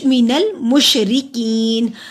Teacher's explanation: رو کو باریک پڑھیں گے، رو کا نیچے زیر ہے، کی کو لمبا کریں گے، جزم الیاس والے زیر ہے، حروف مدے الف کے برابر لمبا ہوگا.